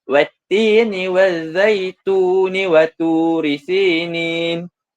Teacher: Kita baca tun tu secara 2 harakat sahaja kerana ia akan bersambung dengan ayat seterusnya, wa turi sinin. Manakala jika dibaca secara berhenti, huruf nun tu akan menjadi sementara.